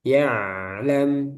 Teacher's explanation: ain dia ada aliran sedikit yaitu bainiyah